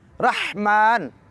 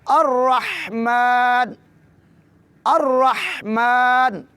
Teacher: رحمہ کی میم کو 2 حرکات کے برابر لمبا کریں گے